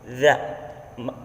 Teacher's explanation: Huruf za makhrajnya atau tempat keluarnya punggung ujung lidah dan ujung dua gigi seri yang atas. Za. Sifat dari huruf za ini yang pertama nafas ditahan, lalu lunak dan suara tidak tertahan, lidah di bawah, lalu terbuka antara lidah dan langit-langit, lalu tidak lancar dan hati-hati.